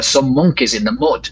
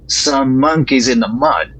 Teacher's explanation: there's no difference in the vowel between foot and strut